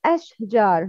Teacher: No, please make tafashi ash-spread the sound. Don't cut out the sound of sheen suddenly to not be as a mukalkala letter, but pronounce it without stopping.